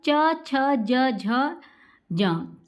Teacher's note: तालु से बोले जाते हैं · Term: च वर्ग